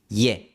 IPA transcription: je